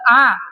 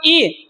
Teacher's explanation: आ जो है वो कंठ से उच्चारित होगा और इ जो है वो कहां से तालु से